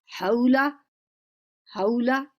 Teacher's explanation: الف مدہ ہے، اسے 2 حرکت کے برابر لمبا کریں گے. حولا، حولا.